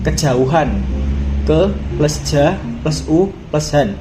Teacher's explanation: Setelah itu kejauhan, ke plus ja plus u plus han, di mana kata ke menggunakan e terbalik seperti e yang ada pada kata emas